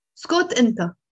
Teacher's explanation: if I put the enta after, there's stress on the enta.